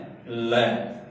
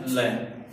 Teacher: जीवा ऊपर की ओ जाती है ऊपर की ओर जाती है दोनों जो साइड है वहां से जगह खाली रह जाती है और धवनी वहां से क्रॉस करती बाहर निकलती है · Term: पार्श्विक व्यंजन